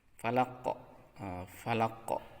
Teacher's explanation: Ketika diberhentikan, maka huruf qaf ini harus dimatikan dengan cara dipantulkan. Tidak boleh dibaca falak, tetapi falaq. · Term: qalqalah